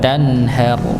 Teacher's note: Idhar halqi dibaca jelas. Ra-nya juga sama, dibaca tebal